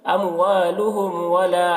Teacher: اموالہم ولا، یہاں پر میم ساکن کے بعد اور یہاں پر بھی میم ساکن کے بعد واو ہے، یہاں پر بھی میم ساکن کے بعد واو ہے، تو یہاں پر اظہار شفوی ہوگا، میم کو ظاہر کر کے جلد پڑھیں گے جیسے ہم تم کی میم کو پڑھتے ہیں